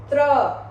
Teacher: फिर त्र बोलोगे तो एक त का साउंड सुनाई देता है और दूसरा र का साउंड, त्र। त पे हम बहुत थोड़ा सा रुकते हैं और र पे ज्यादा देर के लिए रुकते हैं